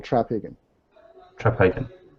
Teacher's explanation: the accent's actually in the first syllable